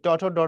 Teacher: মূর্ধা মানে হচ্ছে উপরের তালুর যে শক্ত অংশটা আছে উঁচু অংশটা দাঁতের পিছনে